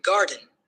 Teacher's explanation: gar is stressed and den is unstressed